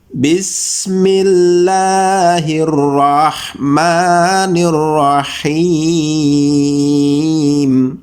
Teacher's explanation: dibaca panjang bisa memilih antara dua harokat 4 harokat ataupun 6 harakat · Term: Mad Arid lissukun